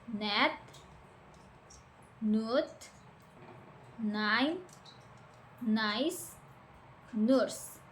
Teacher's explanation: your tongue touches the alveolar ridge and air passes through your nose while using your vocal cords.